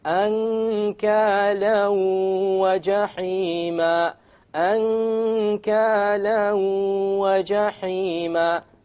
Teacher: You merge the tanween along with the waw and you move on. You don't pronounce the end sound and you have a ghunna.